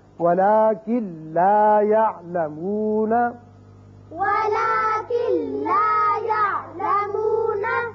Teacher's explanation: اب کن لا نہیں پڑھیں گے بلکہ کاف سیدھا لام سے ملے گا، نون کی آواز پیدا یہاں نہیں ہوگی، یعنی غنہ نہیں ہوگا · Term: ادغام بغیر غنہ